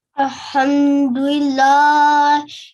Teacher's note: the lam with a vertical fatha, so you have to prolong it for 2 seconds